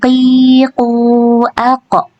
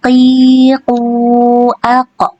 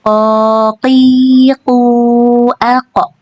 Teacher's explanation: huruf qaf ini dibaca dengan tebal, dan ketika sukun dia dibaca dengan dipantulkan dan tebal juga pantulannya. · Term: qalqalah